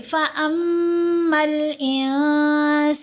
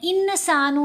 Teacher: فَأَمَّا الْإِنسَانُ، میم کے اوپر غنہ کریں گے کیونکہ میم مشدد ہے، اور نون کے اوپر غنہ کریں گے احفا کرتے ہوئے. احفا مطلب نون کی آواز کو ہم نے ناک میں چھپا لینا ہے، انسانو نہیں پڑھنا.